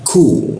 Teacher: Huruf K itu di siku tenggorokan. Lidahnya diturunkan lalu ada hembusan udara yang dibaca ku.